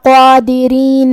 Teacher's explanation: کلمت قادرین میں حرف القاف کا حکم ہے تفخیم، ہمیں یہ حرف کو بھاری آواز میں ادا کرنا ہے، جو کہ اس پہ کھڑا زبر ہے تو یہاں مد الف ہوا، تو ہم قاف کو اور مد الف کو دونوں کو بھاری آواز میں ادا کریں گے